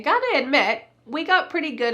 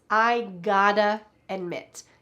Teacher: This reduced word gotta, pronounced God with a D, even though there's a T, is really I have got to admit.